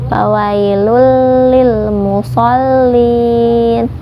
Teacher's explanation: Karena ada tanwin bertemu dengan huruf bila gunnah, yaitu huruf lam. Jadi dibacanya dimasukkan ke lam tanpa disertai dengung. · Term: idgham bila gunnah